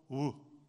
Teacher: you don't even need a tongue to make a W sound. You just round your lips and go, woo.